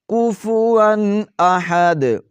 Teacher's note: واو کے اوپر دو زبر ہیں اور آگے حروف حلقی میں سے حمزہ ہے، تو غنہ نہیں کریں گے، ظاہر کر کے پڑھیں گے نون تنوین کو